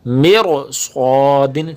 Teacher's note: را کو موٹا پڑھا جائے گا، تفخیم کیا جائے گا، ترقیق نہیں کیا جائے گا